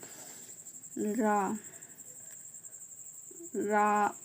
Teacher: इसमें मुख द्वार जीभ की नोक से शीघ्र ही बंद होता है और 2-3 बार खुलता है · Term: लुंठित